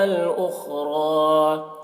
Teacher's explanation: اخرى، خا کو پر پڑھیں گے، خا حروف مستعلیہ میں سے ہے. را کو بھی پر پڑھیں گے کیونکہ را کے اوپر کھڑا زبر ہے